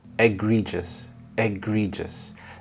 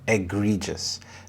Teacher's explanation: The stress is on the second syllable, egregious.